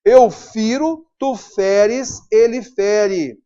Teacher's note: E ele passa a e aberto na segunda e terceira pessoas do singular.